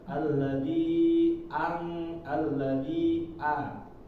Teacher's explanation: huruf A ini termasuk dari huruf syiddah, yaitu nafas suara ini tertahan ya ketika mengucapkannya. Maka ketika kita mengucapkan A itu jelas ya, A.